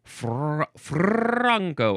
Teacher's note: I don't think they roll their R so much.